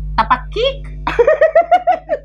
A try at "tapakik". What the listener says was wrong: Bukan tapakik, tapi tapaki. Iya, K di belakang ditekan. Nggak selalu, ada yang jelas K-nya, ada yang ditekan kayak tadi. Ini tapaki.